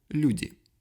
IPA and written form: ˈlʲʉ.dʲɪ (люди)